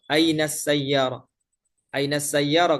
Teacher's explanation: Nah, ketika mereka mengatakan ain sayarah di mana mobil itu misalnya mereka tidak mengatakan ainal sayarah ya. Padahal ada lam takrif di situ. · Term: idgham